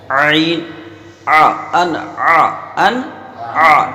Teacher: تو عین کو ہم درمیان حلق سے نکالیں گے